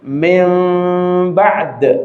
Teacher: Seakan-akan mim ketemu ba kemudian tahan dua ketukan atau satu alif. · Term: iqlab